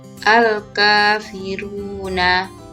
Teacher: al dibaca jelas dan dinamakan al-qamariyah. Al-kafiruna, ka dibaca panjang 2 harokat atau ketukan dan dinamakan mad asli atau mad tabi'i.